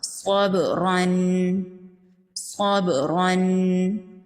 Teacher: با پر قلقلہ ہوگا تو اس وجہ سے با پر تھوڑا سا جھٹکا ہوگا۔